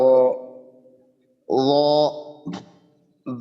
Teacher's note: শুধু র এর ক্ষেত্রে জিহ্বার গোড়াটা একটু উপরের দিকে উঠাবো যেন মোটা হয়। এই বিষয় এই বিষয়ের দিকে লক্ষ্য রেখে আর কি আমরা জিহ্বার গোড়াটা উপরের দিকে উঠাবো, তাহলে জ, ইনশাআল্লাহ র।